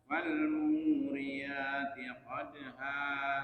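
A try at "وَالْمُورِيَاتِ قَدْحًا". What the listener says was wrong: Nah, hanya itu kayak qadha, kayak ha besar, Pak. Kami ha didorong. Ha. Ha. Qadha. Ha. Ha. Bukan ha. Ha. Ha.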